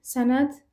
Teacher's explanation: Sənəd karla bitir. Yəni t ilə bitir.